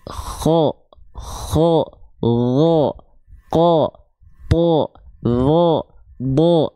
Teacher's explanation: semuanya dia ketika fathah vokal o Kenapa karena dia huruf yang tebal